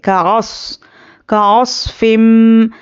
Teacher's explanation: लेकिन स्वाद हुर्फ मुस्तआलिया है तो इसको हम मोटा पढ़ेंगे